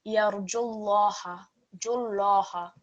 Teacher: So this is our Lam al-Jalala rule coming up again. Because this time the Lam Mushaddad is preceded by a Dhamma stroke, a letter carrying the Dhamma stroke, it's going to be thick on this occasion. So it will be read as Yarjullaha, Jullaha. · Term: thick Lam